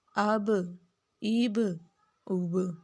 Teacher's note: با کے اوپر قلقلہ ہے تو ہم اس کو ہلائیں گے